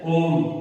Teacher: ठीक है बच्चों, इसमें तीन मात्राओं का, त्रिमात्रिक अर्थात तीन मात्राओं का समय लगता है। ठीक है, उच्चारण काल इसमें तीन मात्राओं का है, इस वजह से इसे प्लुत स्वर कहते हैं